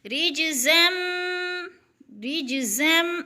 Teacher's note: رِج پہ قلقلہ ہے کیونکہ جیم حروف قلقلہ میں سے ہے، ہلا کر پڑھنا ہے ، قلقلہ کا معنی ہوتا ہے کہ لفظ کو ہلا کر